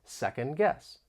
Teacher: you don't really hear the t or d · the final D in second may get muted because of Aion this is when sounds or syllables get removed